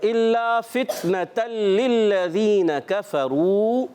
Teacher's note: تو فتنہ کو فا کو تا سے ملانا ہے، تا ساکن ہے اور شدیدہ محموس حرف ہے. حرکات کو نون پر حرکت ہے زبر کی، فا کے نیچے زیر ہے، حرکات کو نہیں کھینچیں گے.